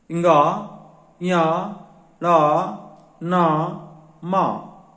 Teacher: इनका उच्चारण नासिका से होता है, इसलिए इन्हें नासिक वर्ण भी कहते हैं।